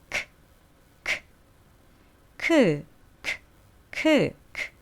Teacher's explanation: ed 앞에 발음이 unvoiced ending일 경우 unvoiced 란 무성음을 말하는데요. 우리가 성대를 만져봤을 때 떨리지 않고 나오는 소리.